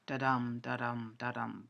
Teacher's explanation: with the first syllable unstressed and the second stressed